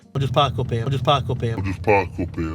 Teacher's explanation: He pronounces it with this raised A sound